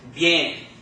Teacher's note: And the I and the E sound are run together into one. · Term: diphthong